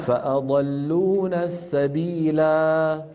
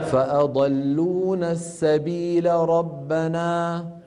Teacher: هذه الالفات السبعه نقف باثباتها ونصل بحذفها